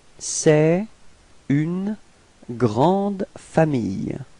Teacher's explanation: you can see this liaison between c'est and une. Okay, so the liaison would sound like t